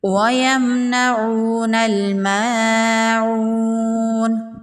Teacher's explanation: میم کا اظہار ہوگا، میم پر غنہ نہیں کریں گے، واو مدہ ہے، ایک الف کے برابر کھینچ کے پڑھیں گے